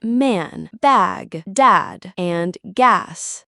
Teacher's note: a is a true low vowel requiring more jaw and tongue muscle as the mouth opens wider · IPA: /æ/